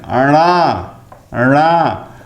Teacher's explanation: ण का उच्चारण स्थान मूर्धन्य नासिक्य, यह द्विस्थानिक उच्चारण है